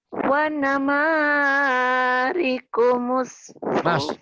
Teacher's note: Ma sama fu-nya doang yang panjang ya